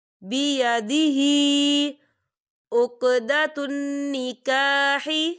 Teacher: ہا کے نیچے کھڑی حرکات ہے، تو ہم اسے 3 حرکت کے برابر کھینچ کے پڑھیں گے